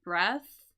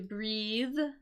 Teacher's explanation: We have breath with that unvoiced TH sound, right? That's for the noun, right? Versus to breathe, the verb there with the voiced sound.